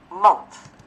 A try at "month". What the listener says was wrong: Month. Nhưng mà mình cũng không đâu là mến nữa. Không phải là mến như trong tiếng Việt hóa mến được, mà là Monday. Mến thì nó hơi mến mến này. Hơi ê một chút xíu, chị đừng có ớ quá. Monday. Month.